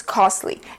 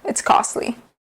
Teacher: pay attention how you pronounce this word because you do not hear the T. It's a very subtle, almost silent T.